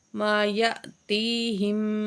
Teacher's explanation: یا کے ساتھ جو حمزہ ہے اس کو جزم ہے تو جھٹکے سے پڑھیں گے تھوڑا سا